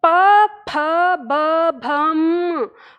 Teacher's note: ये जो प वर्ग है हमारा, इसका उच्चारण हमारे होठों से होता है। हम होठ आपस में मिला के तब हम ध्वनि उत्पन्न करते हैं। तो प फ ब भम, हम यही कर रहे थे, मतलब उच्चारण हम वही अंग ही ले रहे थे, लेकिन होठ आपस में मिलने की वजह से उसका उच्चारण म में परिवर्तित हो गया।